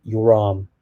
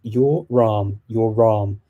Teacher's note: in normal colloquial speech in english i will say your arm the r actually shifts over to the arm so it sounds like you're saying your ram your ram and